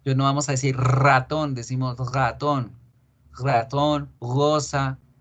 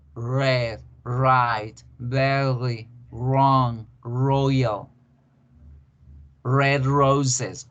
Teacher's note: No lo hacemos fuerte, lo hacemos vibratorio, pero no tan fuerte.